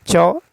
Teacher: च वर्ण का उच्चारण स्थान तालवी है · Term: तालव्य